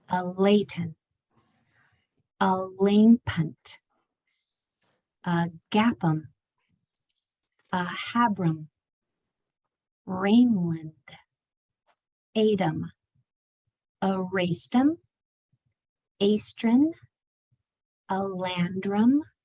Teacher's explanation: all of those A's at the end changed to the schwa sound